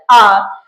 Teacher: विवृत में हमारे पास एक ही स्वर आता है जो है वर्णमाला का दूसरा स्वर आ ये एक मात्र स्वर ऐसा है जिसका उच्चारण करते समय मुंह पूरा खुलता है